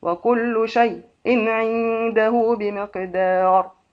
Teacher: حمزة بالسكت في شيء والفتح